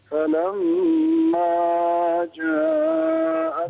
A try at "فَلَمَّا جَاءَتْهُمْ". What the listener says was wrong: بدون مد فلما جاء بدون مد